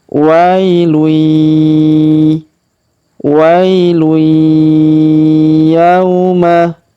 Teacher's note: tanwin un, huruf lun bertemu dengan ya bertasdid maka tanwin unnya melebur masuk ke huruf ya bertasdid. Kita tahan dan tekan ya.